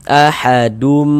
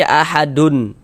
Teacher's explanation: Jadi kalau baca Al-Qur'an bertemu nun sukqon atau tanwin setelahnya itu bertemu dengan salah satu daripada empat huruf yang di samping itu hukumnya idgham big ghunah. Jadi cara membacanya dengan cara memasukkan kemudian disertai dengan ghunah.